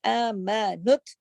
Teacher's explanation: تشدید کی وجہ سے نون جو ہے تا میں جڑے گا کیونکہ 2 تا ہیں, ایک نظر آ رہا ہے ایک چھپا ہوا.